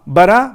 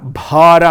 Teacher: ಮಹಾಪ್ರಾಣ ಮತ್ತು ದೀರ್ಘ ಎರಡೂ ಇದೆ ನೋಡಿ